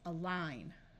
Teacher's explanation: a at the beginning of a word often schwas and takes on a muffled a sound